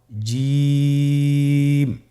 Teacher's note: জিহ্বার মধ্যখান তার বরাবর উপরের তালুর সঙ্গে লাগিয়ে উচ্চারিত হয়